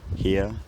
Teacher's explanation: collapses into a centering D thong here here in my accent by the early 1800s the r has gone here and then much more recently the centering dong has smoothed